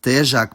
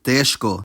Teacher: The [ʒ] devoiced to [ʃ], and the written characters did the same.